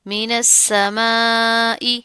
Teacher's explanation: اس حمزہ کی جو آواز ہے اس کو آپ نے عین کے ساتھ نہیں پڑھنا